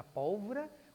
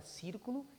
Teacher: Todas são proparoxítonas, têm a sílaba tônica na antepenúltima.